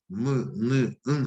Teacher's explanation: 비음. 응 할 때 공기가 코로 가는, 그래서 성대가 울리지만 코도 좀 울리는 그런 느낌이 있으시죠?